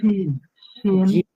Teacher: মাখরাজ বলেন। এটা হলো জিহ্বার মধ্যখান তার বরাবর উপরে তালের সঙ্গে লাগায়া